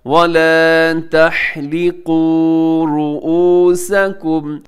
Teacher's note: वाव साकिन है तो वाव मद्दा है, इसे आपने लंबा करना है